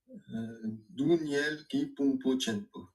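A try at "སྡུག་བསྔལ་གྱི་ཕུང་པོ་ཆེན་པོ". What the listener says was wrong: Très bien. Et puis tu dis Dungel et pas Duniel.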